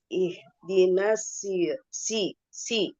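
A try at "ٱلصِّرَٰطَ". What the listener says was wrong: itu harus lebih tebal lagi.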